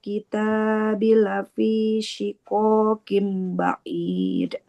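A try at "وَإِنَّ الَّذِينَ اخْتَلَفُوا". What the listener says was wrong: Tapi ada panjang pendek yang keliru sedikit. Wa innal ladzina ikhtalafu. Ada dhammah bertemu waw. Harusnya 2 harokat.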